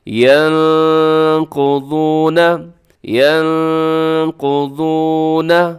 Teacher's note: یہاں پر نون ساکن کے بعد قاف ہے جو کہ حروف اخفا میں سے شامل ہے، تو اپنے یہاں پر اخفا کرنا ہے